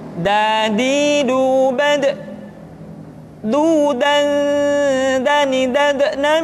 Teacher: diucapkan dengan menyentuhkan ujung lidah kita dengan bagian gusi-gusi dua ujung dua gigi seri bagian atas nah kesalahan yang sering dilakukan adalah menyentuhkan ujung lidah dengan langit-langit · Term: huruf da